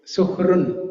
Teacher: you don't pronounce it like a complete syllable, Ra.